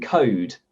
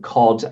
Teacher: most native english speakers make a distinction between that vowel in goat and that vowel in lot